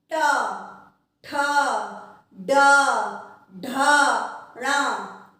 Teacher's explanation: आपकी जिह्वा पलट रही है, पलट कर मूर्धा को टच कर रही है। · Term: ट वर्ग